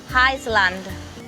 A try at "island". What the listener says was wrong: There are two things to remember with this word. And the other thing is the S. It's a silent letter.